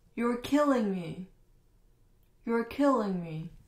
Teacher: 这个代词通常是不重读的，但是因为它这两个词全部都大写了，所以我们要重读出来，又是个感叹句降调